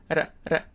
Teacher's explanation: it's produced at the alveolar ridge, which is where you produce the D sound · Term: tap or flap